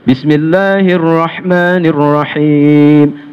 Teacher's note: Jelas bunyi haknya itu terasa di tengah tenggorokan atau wasatul halqi.